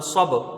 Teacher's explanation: صاد کو جب با سے ملائیں گے قلقلہ ہوگا